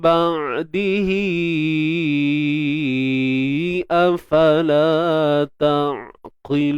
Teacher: Huruf qaf isti'la, angkat pangkal lidah kita untuk hasilkan suara tebal tu. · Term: Huruf qaf tebal